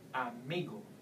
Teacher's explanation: you no no longer stress in the end you will have to go to the second last syllable